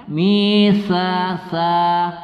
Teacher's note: ta adalah huruf hams ya karena dia ketika melafazkannya kita terjadi penghembusan napas